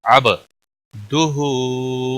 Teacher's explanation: با ساکن حروف قلقلہ میں سے ہے، اس پر قلقلہ ہوگا.